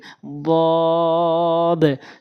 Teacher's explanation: জিহ্বার গোড়ার কিনারাটা উপরে মাড়ির সঙ্গে লাগাবেন